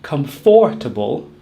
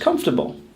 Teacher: If you're saying 4, you're not saying it correctly. Comfortable only has 3 syllables, as we drop the middle syllable. We do not say comfortable, just comfortable.